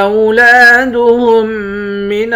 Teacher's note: ہا کو میم مشدد کے ساتھ ملا کر ادغام مع الغنہ کریں گے، یعنی ہا کو تشدید والے حرف کے ساتھ ملا کر پڑھیں گے، جزم والے حرف کے ساتھ ملا کر نہیں پڑھیں گے۔